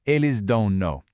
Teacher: It would sound choppy. Instead, that N is added to bridge the sounds, turning O into no. So it becomes eles dão no.